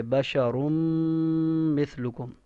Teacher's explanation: یعنی غنہ کے ساتھ ہم ادغام کریں گے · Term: ادغام مال غنہ